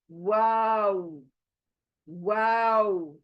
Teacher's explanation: तो यह ऐसे सिंपल होठ रकर वाव नहीं पढ़ सकते आप आपको वाव बोलते वक्त होठों को गोल ही करना है तब एगजैक्टली प्रोनाउंस होगा